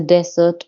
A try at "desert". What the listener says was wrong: now you have to pronounce desert a little better. Desert. Accent on the first de. Desert. Desert, yes.